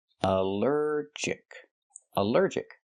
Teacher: Allergic is 3 syllables. Allergic. The stress is on the second syllable.